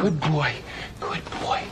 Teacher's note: D goes in your throat and then you concentrate on B, so good boy. So it's somewhere in your throat.